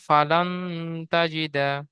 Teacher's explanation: নুন সাকিনের পরে হুরুফে ইকফা 15টির মধ্য থেকে তা এসেছে, তাই নুন সাকিনের আওয়াজকে নাকে তুলে একালি পরিমাণ গুণনা করে পড়তে হবে। জিমের নিচে জের এসেছে, জেরটি হারাকাত, হারাকাতে তাড়াতাড়ি পড়তে হয়, টান দেওয়া নিষেধ।